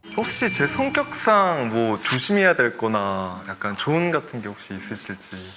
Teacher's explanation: Instead of quickly going back down at the very end, like what most people will do, his sentences slowly drop down at the end. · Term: intonation